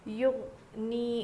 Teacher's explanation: غین حروف قلقلہ میں سے نہیں ہے تو اس میں دو آوازیں نہیں آئے گی